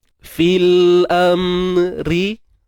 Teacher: Ra baris bawah nipis. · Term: Ra nipis